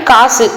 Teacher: சொல்லினுடைய இறுதியில வரும்போது ஒரு மாத்திரைக்கு பதிலாக அரை மாத்திரை அளவே வந்து ஒலிக்கும் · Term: குற்றியல் உகரம்